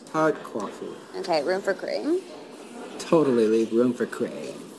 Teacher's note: They speak with what's called vocal fry, which is when you can hear the vibration in a raspy, low voice that drags out certain syllables.